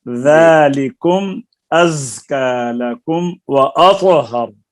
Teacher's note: ذالکم ذال نرم ہے، از زا سخت ہے، طا پر ہے.